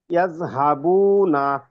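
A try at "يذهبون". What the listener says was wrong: হুম, good.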